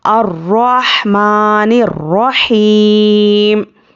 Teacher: और यहाँ पर भी, यहाँ पर क्या है, या मद्दा है तो या मद्दा को 3 से 4 अलिफ के बराबर खींचकर पढ़ना है।